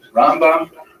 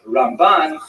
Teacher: Rambam is pronounced with the emphasis on the first syllable, Rambam, and Ramban is pronounced with the emphasis on the second syllable